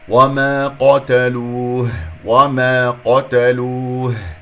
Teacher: القاف مفخمة مرتبة ثانية، ونضم الشفتين في اللام والواو والهاء